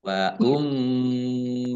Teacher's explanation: mimnya mim tasdid dibaca gunah atau mendengung ditahan dua harakat